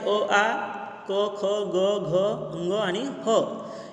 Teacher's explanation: या वर्णांचा उच्चार करताना साधारणतः आपल्या कंठातून हवा बाहेर फेकली जाते